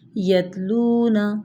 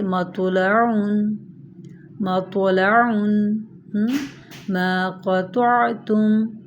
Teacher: تا کی آواز باریک اور بغیر جھٹکے والی ہوتی ہے، جبکہ تو کی آواز موٹی ہوتی ہے، اور جب تو کے اوپر جزم آئے تو جھٹکے والی بن جاتی ہے، جیسے کہ یتلون۔